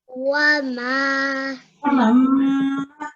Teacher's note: So the noon, we don't recite that at all. We just recite just the meme, and we just hold it for a couple of seconds. Why? Because meme mushaddad is a gunna sound and nasalization.